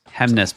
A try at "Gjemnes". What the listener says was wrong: the G is silent, the J is a Y.